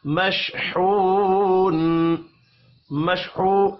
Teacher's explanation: واو مدہ ہے، ایک الف کے برابر کھینچ کر پڑھیں گے، وف کی صورت میں نون ساکن پڑھا جائے گا۔